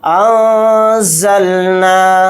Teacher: تو نون کی آواز کو ناک میں چھپا کر اخفا کریں گے